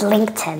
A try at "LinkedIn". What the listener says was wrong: Beautiful.